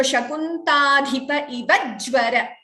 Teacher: Extra j there if you chant without a pause. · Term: dvitvam